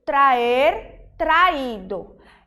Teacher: Para indicar que a raiz do verbo e a terminação são independentes, não são um ditongo.